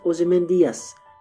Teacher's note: Now, if I pronounce the name of the poem Ozymandias, giving it 5 syllables, but Shelley in his time period and in Britain would have pronounced it Ozymandias, giving it only 4 syllables